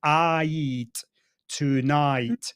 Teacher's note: night it's what we call a diphthong the vowel changes